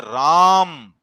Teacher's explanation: हम बोलते हैं राम, तो रा पे ज्यादा बल दिया और मां पे हमने कम बल दिया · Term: बलाघात